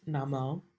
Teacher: the na is a short syllable and the mo is stretched out